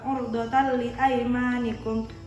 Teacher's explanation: Huruf idgham bila gunnah lam dan ro. Idgham bila gunnah itu dibacanya dimasukkan. Jadi langsung ke huruf lam.